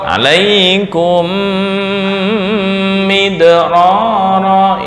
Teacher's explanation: Dengung. Alaikum midrara. Ini yang disebut dengan idgham mimi.